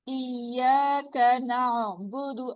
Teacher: اس میں آئین کی آواز کو چلتا رہنا چاہیے, اس میں رکنا, رکاوٹ نہیں آنی چاہیے. نعبد نہیں کہنا, ٹھیک ہے, یہ کٹ رہی ہے آواز, کٹنی نہیں چاہیے.